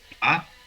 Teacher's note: el segundo tono es ascendente. Ma es más o menos parecido como si estuviéramos haciendo una pregunta en español.